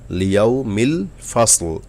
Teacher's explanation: লিয়াউমিল ফাসল, লিয়াউমিল ফাসল, এখানেও কোনো টান গুন্না কিছু নাই, কিন্তু ফাস সদ বলার সময় একটু মোটা করবেন। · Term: মোটা অক্ষর